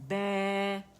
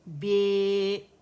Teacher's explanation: resting position سے اسے نکال دیا، اور میں نے اسے امالہ ٹلٹنگ دے دی